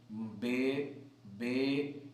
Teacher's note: تو یہ بیر جو ہے، یہ جس طرح ہم بیر پڑھ رہے ہیں، اس میں جو ہے وہ یا کی طرف زیادہ جھکاؤ ہے، یعنی زبر کا زیر کی طرف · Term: امالہ کبریٰ